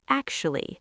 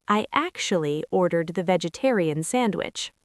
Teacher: It sounds more like actually. The middle part is a very soft schwa sound.